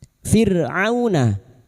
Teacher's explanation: fathah bertemu waw sukun kita lunakkan huruf lin